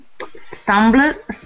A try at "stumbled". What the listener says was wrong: Stumbled. You don't say the L. Stumbled.